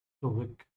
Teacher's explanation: the Z isn't voiced, as in it's not a Z, it's a S